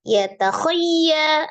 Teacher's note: Ya takhayya, ada ya tasdid di situ, hukumnya nabar ya, ditekan. Kemudian sifatul huruf iya-nya sendiri itu adalah roghaya dialirkan.